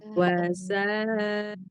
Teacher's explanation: ta sukun itu kan dia hamas plus syiddah. Nah, kata guru saya itu si hamasnya ta sama kaf itu lebih kuat ketika dia sedang sukun.